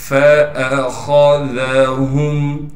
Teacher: خا کو موٹا کر کے پڑھیں گے، اس لیے کہ خا موٹے حروف میں سے ہے، ذال کو باریک کر کے نرم کر کے پڑھنا ہے · فَأَخَذَهُمْ، فا کے بعد تو الف لکھی ہوئی ہے لیکن یہ الف نہیں ہے، اس لیے کہ الف پر زبر آ گیا، اب یہ حمزہ پڑھا جائے گا بغیر جھٹکے کے ہم نے پڑھنا ہے۔ خا کو موٹا کر کے پڑھیں گے، اس لیے کہ خا موٹے حروف میں سے ہے